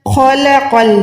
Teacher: خو موٹا لام باریک